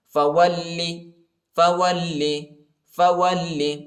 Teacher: خَرَجْتَ، خَرَجْتَ، فَوَلِّ، فَوَلِّ، وہ کو لام کے ساتھ ملائیں گے، اور لام کو شدت کے ساتھ، سختی کے ساتھ پڑھیں گے